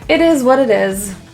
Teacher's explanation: The S's are all pronounced as Z, a Z, and the T's are all flaps, so they sound like D's.